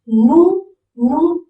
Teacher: S is completely omitted in sounding